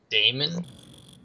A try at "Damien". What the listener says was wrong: You said Damon. It's Damien's. Damien.